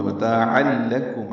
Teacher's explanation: تنوین کے بعد لام آنے کی وجہ سے عین کو لام سے ملانا ہے، ادغام کامل ہوا ، متاعا لکم، عین وسط حلق سے ادا ہو، لام باریک · عین وسط حلق سے ادا ہو ، لام باریک ہے، کاف باریک ہے، میم ساکن پہ اظہار